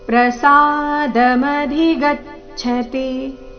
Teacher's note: ಈ ಚರಣದಲ್ಲಿ ಗಮನಿಸಿ, ಸಾ ಒಂದೇ ಒಂದು ಅಕ್ಷರ ದೀರ್ಘ, ಮಿಕ್ಕಿದೆಲ್ಲ ಅಕ್ಷರಗಳು ರಸ್ವ.